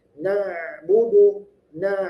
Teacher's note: Kemudian na'budu, nah ain. Nah, ketika membaca na'budu, huruf ainnya di tengah tenggorokan ya.